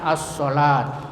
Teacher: Cara membacanya dengan mengidghamkan atau mentasdidkan pada huruf syamsiyah ya, sehingga alif lamnya tidak terbaca lagi meskipun tulisannya tetap ada. Jadi alif lamnya itu tidak terbaca walaupun ada tertulis seperti as-salat. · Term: idgham syamsiyah